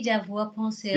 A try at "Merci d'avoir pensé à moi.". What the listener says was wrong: Yeah, but don't open the mouth. Merci. Soft mouth. Vowels don't need mouth. Here's my mouth closed. Ooh, I don't need to open my mouth for vowels. Merci d'avoir pensé à moi. Merci d'avoir pensé à moi.